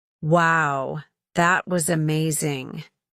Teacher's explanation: Here the pitch rises in excitement and falls to end the sentence. Rise-fall intonation conveys strong emotions like excitement, surprise, or certainty.